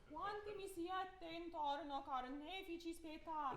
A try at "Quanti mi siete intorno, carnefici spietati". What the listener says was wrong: Except quanto mi siete is one T, right? So quanto mi siete intorno, carnefici spietati. One T on that.